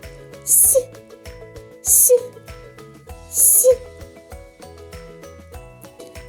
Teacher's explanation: Звук «с» приголосний, м'який, глухий. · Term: м'який приголосний «с»